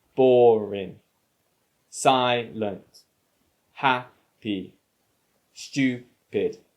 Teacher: the stress or the emphasis is on the first syllable